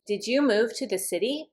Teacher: When I hear the voice go up, I know the answer is yes or no.